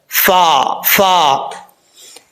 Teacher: ऊपर वाले दो दांतों का किनारा नीचे वाले होंठ की तरी वाली जगह पे लगे तो फा पढ़ा जाता है।